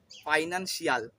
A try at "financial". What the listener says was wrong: ফাইন্যান্সিয়াল। শিয়ালের মতন উচ্চারণ, বাট ওটাকে শ্যাল করে উচ্চারণ করতে হয়।